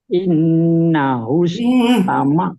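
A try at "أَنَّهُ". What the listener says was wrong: Bukan innahu, barisnya patah kan? Terus patah. Kalau patah masa innahu an?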